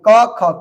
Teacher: क वर्ग के उच्चारण स्थान कंठ